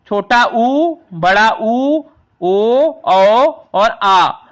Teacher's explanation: जिन स्वरों के उच्चारण में होठों का आकार गोल हो जाता है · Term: वृत्ताकार